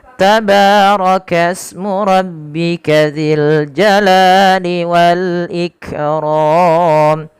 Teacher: ro-nya tebal karena dia berharakat fathah